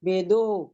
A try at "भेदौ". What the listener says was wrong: भेदो, ओहो नहीं है उधर, निकाल दीजिए, वो विसर्ग नहीं है उसमें, करेक्शन कीजिए वो। हाँ, भेदौ, वो विसर्ग है ना, पीछे विसर्ग नहीं है